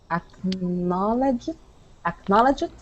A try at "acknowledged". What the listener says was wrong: All right, so we don't want to say id at the end. Acknowledge it. Okay, we want to say acknowledge. Acknowledged.